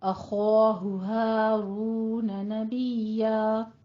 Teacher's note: ہارون دونوں ہا یہاں پہ عکس حلق سے نکلیں گے، سینے کی جانب سے موٹی آواز کے ساتھ